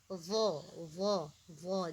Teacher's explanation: Dha itu lidah dikeluarkan sedikit. Lidah dikeluarkan sedikit. Sesudah itu lidah bahagian tengah dinaikkan ke arah atas. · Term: huruf lidah